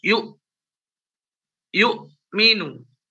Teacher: Yang jadi huruf hamzah itu ketika dia sukun maka suaranya harus diputus. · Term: syiddah